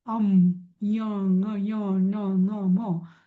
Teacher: इथं काही हवा ही नाकातनं आवाज येतोच, नाही का? म्हणून त्याला नासिक्य किंवा नासिका म्हणतात.